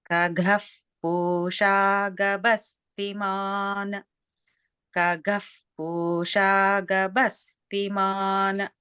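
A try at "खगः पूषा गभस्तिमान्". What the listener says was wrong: Just notice the Mahapranas in Khaga, Khagaf, and also Gabhasti, Gabhasti.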